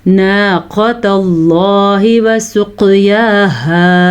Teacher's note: قاف کو موٹا کر کے پڑھنا ہے اور اس قاف پہ قلقلہ بھی ہو رہا ہے اور موٹا بھی کرنا ہے